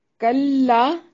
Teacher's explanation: کلا، کاف کو باریک پڑھیں گے، لا الف مدہ ہے